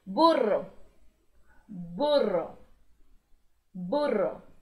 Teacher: O burro, mesma coisa, se escreve igual, mas a pronúncia é bem diferente, já que o RR em espanhol vibra muito, vibra duas vezes